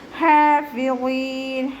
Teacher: ഫ ലൈറ്റ് ആക്കിയിട്ട് ഉച്ചരിക്കാൻ ശ്രദ്ധിക്കുക കേട്ടോ. മേലെ മുൻപല്ലിൻ്റെ അറ്റം താഴെ ചുണ്ടിൻ്റെ ഉൾവശത്ത് നനഞ്ഞ ഭാഗത്ത് വെച്ചിട്ട് ഉച്ചരിക്കുക